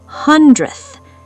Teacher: The D and th are right next to each other. In real speech, the D sound literally vanishes. It gets crushed.